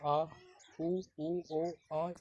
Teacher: ये सभी पश्च स्वर है